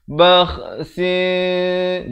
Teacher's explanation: Kha di hujung kerongkong. Bakhsin. Di sini juga ikhfa hakiki 2 harakat.